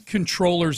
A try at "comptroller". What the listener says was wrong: Yeah, I was I didn't want to be the jerk, but every time you said controller, I was like, isn't it comptroller?